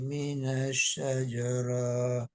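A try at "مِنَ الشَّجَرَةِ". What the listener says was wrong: Sama minasyajaroh rohnya nggak ada mat.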